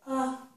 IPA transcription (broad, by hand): ə